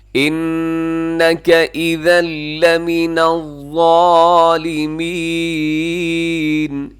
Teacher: اذا میں ادغام بغیر غنے کے ہے